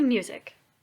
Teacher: We say music, so the emphasis is on the first syllable. The word music by itself is not an iamb, because remember, iambs go unstressed, stressed.